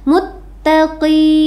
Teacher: bacanya selama 2 harokat atau 2 ketukan, atau sama juga dengan 1 alif. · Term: mad asli